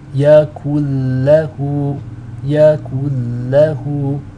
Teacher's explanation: You're dropping out the noon altogether and you're linking up the kaf into the lam with the shadda. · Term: idgham bila ghunna